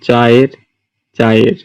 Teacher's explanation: অন্তঃস্থ শ্রুতি হচ্ছে গিয়ে চায়ের, মানে দুটি যে স্বরধ্বনি আছে সেটি একসঙ্গে উচ্চারিত হওয়ার পর এমন মনে হয় যে একসঙ্গে মিশে গিয়েছে